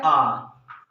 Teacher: हमने देखा था जिसमें मुख द्वार लगभग क्या होता है, खुला रहता है। एक बार आ बोलिएगा तो हमारा मुंह क्या है, खुला हो जा रहा है, ओपन हो जा रहा है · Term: विवृत